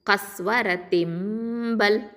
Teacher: இங்கே வந்து எக்கலாபு சட்டம் வரும். சரியா, அந்த நூன் சாக்கினா மீமா மாற்றி நம்ம ஓதுவோம்